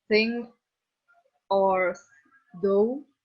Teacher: And the third one is dental. The active articulation is in the tongue tip. The passive is in the back or the edge of the upper front teeth.